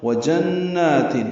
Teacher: وَجَنَّاتٍ واو ہونٹوں کی نا تمام گلائی سے ادا کریں گے، نون مشدد پہ غنہ ہوگا، دو حرکات نون کو لمبا کریں گے